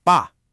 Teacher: The first syllable, ba, is a fourth tone. It's sharp, it's a decisive fall in pitch, almost like a command, ba. Then the second syllable is a neutral tone, so it's light and unstressed.